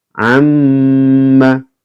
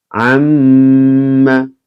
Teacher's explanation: ketika ada mim yang bertasdid atau angka 3 yang tertidur, maka juga dibaca mendengung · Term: bacaan gunnah